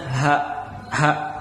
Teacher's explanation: Kalau h besar itu dia tempat keluarnya sama dengan tadi huruf hamzah, ada di pangkal tenggorokan ya, pangkal paling bawah, berarti tenggorokan paling bawah. Jadi suaranya h, ada getaran di sini.